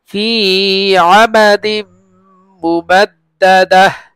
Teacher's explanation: ফি এখানে লম্বা হবে মদের হরফ, আমাদিম তানবিনের পরে মিম আসছে ইদগামে বাগুন্না